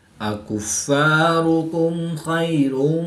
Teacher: میم ساکن کے بعد حرف با اور میم کے علاوہ حرف خا ہے تو یہاں پر اظہار شفوی ہوگا، غنہ نہیں کریں گے بلکہ میم ساکن کو ظاہر کر کے پڑھیں گے۔